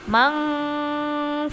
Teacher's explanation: Karena nun sukun bertemu dengan huruf fa. Cara membacanya, nun dibaca samar sambil berdengung pas menuju huruf fa. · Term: ikhfa ausat